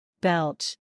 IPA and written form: bɛltʃ (Belch)